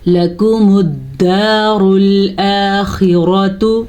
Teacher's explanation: خا کے مخرج کا دھیان رکھیں گے، خا ہمیشہ ہی پر پڑھی جاتی ہے، اور را بھی پر پڑھیں گے کیونکہ را پہ زبر ہے